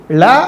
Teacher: ஏன்னா நாக்கு மடிக்கும் போது நீங்க லன்னு சொல்லும்போது உங்க நுனி நாக்கு வந்து மேல்வாயை தொடும்